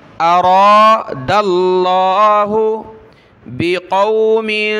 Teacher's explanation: वइज़ा अरादल्लाहु, दाल को लफ्ज़ अल्लाह के साथ मिलाया